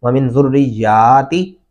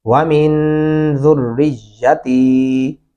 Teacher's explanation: میں نے بچوں کو بھی ایسے پڑھتے ہوئے سنا ہے، یہ بہت بڑی غلطی ہے، اس پہ خاص اپنی توجہ دیں۔ ذریاتی، یا کو لمبا نہیں کرنا اور تا کو کرنا ہے